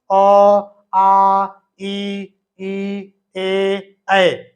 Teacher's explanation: इनको बोलने में हमारे मुंह की होठ की आकृति गोल नहीं हो रही है लेकिन इनको बोलने में गोल हो रही है इसलिए ये वृत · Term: अव्रत मुखी